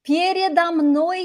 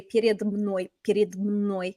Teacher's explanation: It's a lot harder to say перед мной, перед мной. So we just put in that extra little o because of the consonant cluster